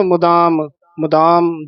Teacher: ਮੁਦਾਮ ਦਦੇ ਦੇ ਨਾਲ ਧਦਾ ਨਾ ਬੋਲਿਆ ਜਾਵੇ।